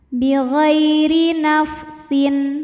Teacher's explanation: Ghai ada harfulin karena ada ya sukun didahului fathah, maka dibacanya lembut. Bi ghairi, huruf ra dibaca secara tarqiq karena berbaris kasrah, maka bacanya tipis. Bi ghairi nafsin, sin ada hukum idhar halqi karena ada tanwin kasrah menghadapi huruf halqi atau huruf tenggorokan yaitu hamzah, maka tanwin dibaca dengan jelas.